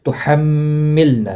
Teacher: میم مشدد پر گنہ ہوگا، لام ساکن کو ہلانا نہیں ، نا الف مدہ ہے، ما الف مدہ ہے، لا الف